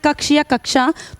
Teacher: अगर हमें लिखना है कक्ष या कक्षा तो हम यह ऊपर वाला क्ष यूज करेंगे और आप बोल के देखेंगे ना तो आप हल्का सा क का साउंड क्रिएट करते हैं। उसके बाद आप क्ष बोल पाते हैं।